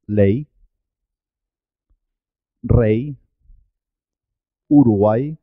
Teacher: cuando va sola en la sílaba suena como vocal